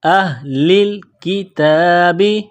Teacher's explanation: تا کے اوپر کڑا زبر ہے، ایک الف کے لمٹ میں کھینچنا ہے